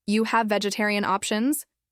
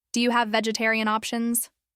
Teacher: That little, Do you? and the gentle rise in his voice made his question sound polite, clear, and confident.